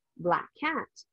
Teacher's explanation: the same K sounds so you can skip one of the K sounds